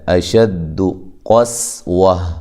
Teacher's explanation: یہاں قاف کو موٹا کرنا ہے، سین کو باریک